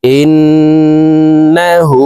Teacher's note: হার উপরে উল্টা পেশ আছে তাই ঠোট গোল করে হাকে এক আলিফ টেনে পড়ব